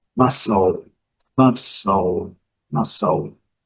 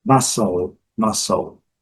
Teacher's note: Letra L pronunciada. O L com aquele som do dark L